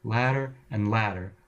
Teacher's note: the tongue just sort of whoops by or flaps by the alveolar Ridge without making full contact